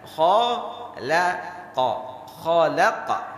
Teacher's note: Kha hurufnya tebal. Lam tipis, qaf tebal lagi.